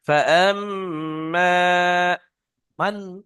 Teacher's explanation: এই মানটা, এই নুনটা কিন্তু গুণনা হবে না, ইজাহার, এটা হামজা এসছে হরফে হালকির মধ্যে।